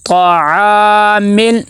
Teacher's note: طاع، طاع، عین کو لمبا کریں گے، آگے مل، میم کو لام کے ساتھ ملائیں گے، کلکلا نہیں ہونا چاہیے کیونکہ لام حروف کلکلا میں سے نہیں ہے